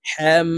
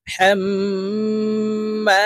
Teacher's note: এই হাটি তাসদীদওয়ালা মিমের সাথে গুন্নার সহিত পড়তে হবে। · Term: গুন্নাহ